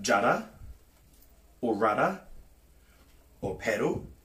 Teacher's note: That double D sound, or the purring cat rolling R, is how we pronounce our R sound in Te Reo Māori.